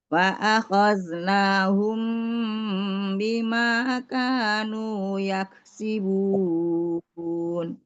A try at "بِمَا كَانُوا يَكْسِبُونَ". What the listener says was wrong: Nah, kenapa itu nggak stabil kayak bima kanu? Ma dengan nu-nya itu lebih panjang dari ka, padahal harusnya sama bima kanu yaksibun. Bima kanu yak sama.